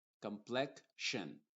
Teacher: En la combinación complexion encontramos una K y una SH, complexion, pero esa K y esa SH están representando a esta X.